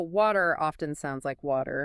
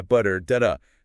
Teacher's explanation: It happens when a T sound comes between 2 vowel sounds. American speakers, often without thinking, soften that T into a really quick, light D sound. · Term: flap T